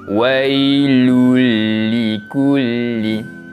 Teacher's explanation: Cara bacaannya sama juga, kita akan memasukkan bunyi bacaan tanwin kepada huruf selepasnya dan dibaca dengan tanpa dengung. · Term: idgham bila gunnah